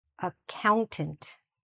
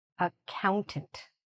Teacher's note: The stress is here, in count.